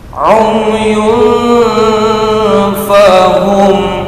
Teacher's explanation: Tanwin bertemu dengan huruf yang 15 atau nun sukun, maka cara membacanya mendengung, samar, panjang 2 harokat